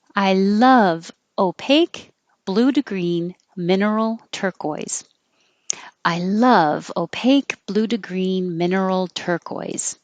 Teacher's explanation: you have a list of adjectives before the turquoise. So they will start high and step down, down, down.